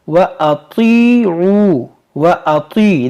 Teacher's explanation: ये त्वा है हुरूफ मुश्तालिया, इसको मोटा करेंगे। व अतीउ, व अती, देखिए बाज़ लोग इसको पढ़ते हैं अति, व अति ता से पढ़ते हैं, तो ता से आपको नहीं पढ़ना है, इसको तो मोटा करना है।